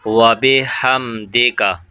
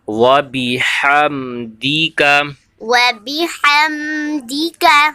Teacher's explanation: تو دے کی جگہ میں دی پڑھنا ہے. ٹھیک ہے، دال زیر دی، تو آپ نے دی کرنا ہے، دے نہیں کرنا.